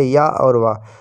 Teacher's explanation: अर्धस्वर है ना। संघर्षहीन सप्रवाह जिनके उच्चारण में हवा बिना संघर्ष के निकलती रहे